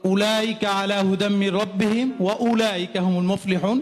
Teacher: ওয়া উচ্চারণ ক্ষেত্রে দুই ঠোঁটের মাঝখান থেকে ওয়া উচ্চারণ হবে